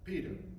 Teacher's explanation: it's unvoiced but it's also not aspirate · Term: Italian be